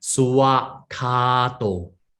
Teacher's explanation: They will chant it as suwa, not swa. The more properly is suwa.